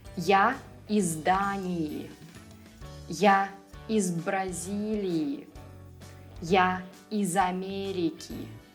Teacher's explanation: In these examples, z in the preposition will stay voiced.